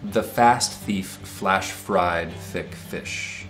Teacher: This has got F, which is a labiodental sound, lip and teeth, and TH sounds